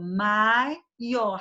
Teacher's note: Já no caso da palavra maior, não há como pronunciar em uma única emissão de voz, já que o A e o O são vogais tônicas, então eu falo maior separadamente, não tem como juntar maior.